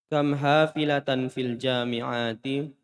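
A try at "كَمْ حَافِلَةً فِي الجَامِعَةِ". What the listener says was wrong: Jami'ati pendek. Jami'ati, ulang.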